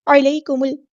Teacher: یا لین اور یہ نرمی سے موڑیں گے